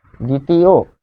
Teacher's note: অ থাকার কারণে অ যেহেতু শেষে রয়েছে তাই লাস্টে গিয়ে ও হচ্ছে দ্বিতীয়।